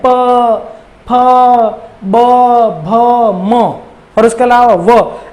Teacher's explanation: इन 6 वर्णों को जब आप बोलेंगे ना मित्रों, तो आपके होठों का सक्रिय होना जरूरी है। आपके होठ एक दूसरे को चूमते हैं, स्पर्श करते हैं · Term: ओष्ठ